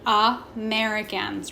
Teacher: word Americans okay a couple things the first one being that a is making that schwa sound it's being super lazy Americans right next that E is making that a sound mericans